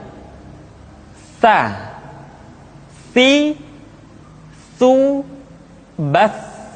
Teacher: Ta dikeluarkan dengan menyentuhkan ujung lidah kita dengan dinding dua gigi seri bagian atas. Diucapkan dengan suara dan nafas yang terdengar mengalir. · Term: huruf Ta